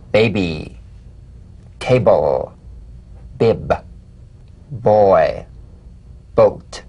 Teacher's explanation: gentle voiced pulsation on the lips like a delicate, crisp tap. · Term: drumbeat b